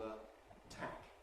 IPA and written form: ə ˈtʰæk (a tack)